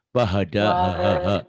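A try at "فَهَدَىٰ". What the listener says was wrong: Bahada ha gede. Jangan ada desahnya. Kalau ha gede jangan ada desahnya ya. Walladzi qaddara fahada. Walladzi qaddara fahada. Walladzi qaddara fahada.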